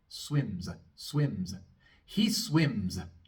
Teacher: Termina en M, un sonido sonoro, así que la S también es sonora. Vamos a pronunciar una pequeña A después, muy cortita.